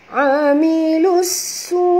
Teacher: masukkan bunyi lam ini terus ke dalam sin disertai dengan njud kerana di atas sin ada tasydid. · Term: alif lam syamsiah